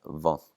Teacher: the D is going to drop out, and we're going to have vont without the D. D and T can't really go together in Icelandic.